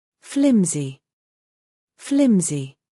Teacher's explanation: It's not pronounced with an s sound, but it's closer to a zed sound.